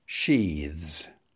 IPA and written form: ʃiːðz (sheathes)